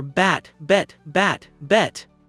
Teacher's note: The EH sound in bet is more closed, more discreet